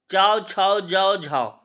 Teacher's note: इनका उच्चारण स्थान क्या हो जाएगा? तालव्य से हो जाएगा।